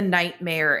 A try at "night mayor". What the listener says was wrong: I want to clarify, just because it sounds like you're saying nightmare. It's night mayor.